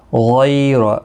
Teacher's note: غی یا لین ہے، تھوڑا نرمی کے ساتھ کھینچ کر ادا کریں گے، اور را پر پڑا جائے گا زبر کی وجہ سے۔